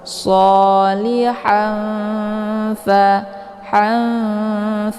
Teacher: cara bacanya tanwinnya disamarkan mau siap-siap masuk ke huruf fa shihan fa Han jadi tanwinnya disamarkan kemudian ditahan yaambil tahan sehingga · tanwinnya disamarkan kemudian ditahan ya, sambil ditahan sehingga terbentuk suara yang mendengung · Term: ikhfa awsat